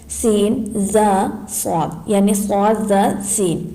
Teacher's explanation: زبان کی نوک اور دونوں دانتوں کے اندرونی کنارے سے ادا ہوتے ہیں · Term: حروف صفریہ